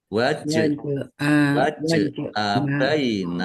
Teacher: Jim sukun bacaan qalqalah dibaca memantul. Ditampakkan pantulannya jangan malas memantulkan.